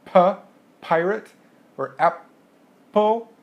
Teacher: So if you make a sound like puh, pirate, or apple, that P sound completely stops all of the sound coming out of your throat, therefore it's called an oral stop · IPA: /p/